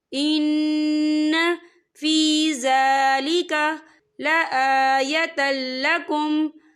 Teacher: यहाँ नून मुशद्दद है, तो यहाँ पर गुन्ना होगा